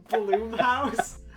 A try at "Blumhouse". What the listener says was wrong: It's Blum. Yeah, Blum. Blum, not Bloom.